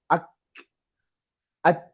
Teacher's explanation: kaf dengan ta syiddah makanya tinggal sedikit bunyi anginnya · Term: sifat syiddah